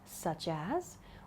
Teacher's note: we can also use such as to ask for examples, and this is with upward intonation